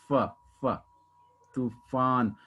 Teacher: जब फा बोलते हैं ना, तो हमारे जो नीचे वाले लिप्स है वो ऊपर वाले टीथ से टच होते हैं। · वही हिंदी का जो फ है तो उसमें 2 लिप्स टच होते हैं, लेकिन जो फ बोलने के लिए आपके ऊपर के टीथ और नीचे का लिप्स टच होता है।